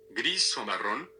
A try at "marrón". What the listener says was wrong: Marron. It's not marrone, but marron.